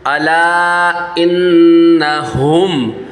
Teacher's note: الا الا انہم، انہم، الا انہم ہم السفہاء، ہم الا انہم، اچھا ہم میں دیکھیے گا میم ساکن ہے، میم ساکن کے بعد آگے جو ہے یہ ہا آ رہا ہے، با اور میم کے علاوہ ورڈ آ رہا ہے، یہاں پر اظہار شفوی کا قاعدہ ہوگا، اس میں غنہ نہیں کریں گے۔